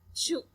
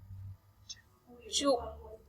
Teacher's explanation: Aquí observamos dos fonemas que se conocen como consonante alveopalatal africativa coronal sorda